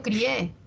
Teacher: esto es un diptongo hay una cerrada una abierta y la que suena más es la abierta